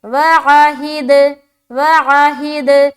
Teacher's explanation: دال کے اوپر سکون ہے تو قلقلہ کریں گے